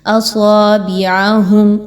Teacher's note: اصابعہم، اب صاد آ گیا ہے حرف اور اس پر کھڑا زبر ہے، 2 الف کے برابر اس کو لمبا کریں گے اور ساتھ میں صاد کو سیٹی کی آواز کے ساتھ خوب موٹا کر کے پڑھیں گے. با زیر بی، اب اس کی حرکت کو بے نہیں رکھنا بلکہ بی.